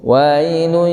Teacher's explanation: Kitabun marqum wailun, dengung, wailun, tanwin bertemu dengan ya itu didengungkan